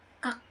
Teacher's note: bunyi akhir k yang digunakan dalam anomatop mimetik dapat memberikan kesan putus atau serentak gitu jadi kayak mendadak dan penghentiannya itu sangat singkat